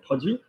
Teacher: We don't pronounce the T because there's no vowel after it.